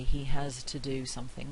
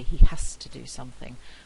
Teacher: we usually say he has to do something with a voiceless fricative